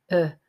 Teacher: it's a very relaxed and neutral uh sound